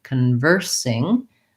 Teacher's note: And we have another O, and in this case, we don't have the ah sound. Instead, we have a schwa. So I'm going to rewrite that one with the letter U and think about it as being conversing.